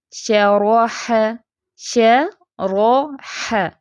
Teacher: اب شین اور ح دونوں ہی باریک ہیں، را فیٹ ہے درمیان میں